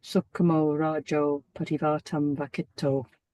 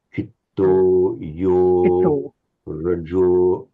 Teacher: there's a slight tendency to make these long O slightly English, slightly diphthongal